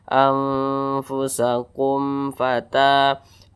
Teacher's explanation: hukumnya adalah izhar syafawi. Dibaca jelas, tidak berdengung.